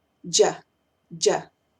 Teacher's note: No digo la primera D, solamente digo la DY más A